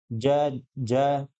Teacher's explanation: ऐसी ध्वनि जिनका उच्चारण करते समय जीवा का मध्य वाला भाग और तालु से स्पर्श होता है। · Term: तालव्य ध्वनि